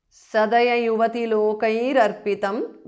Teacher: Sadaya yuvati lokaihi is a compound word. Visarga changes to repha